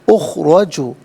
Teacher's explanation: اخرجو میں را پر زبر ہے، را کو پر کر کے پڑھا جائے گا. را پر زبر یا پیش ہو تو را کو پر کر کے پڑھتے ہیں، زیر ہو تو باریک کر کے پڑھا جائے گا.